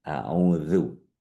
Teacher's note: Jadi lidah, ujung lidahnya ketemu sama gigi seri atas.